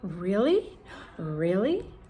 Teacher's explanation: it's not really rising or falling, it's a mix